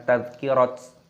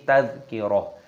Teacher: Taknya tak marbutoh, ketika tanda waqaf berhenti maka berubah menjadi huruf ha, bukan tadhkirat tapi tadhkirah.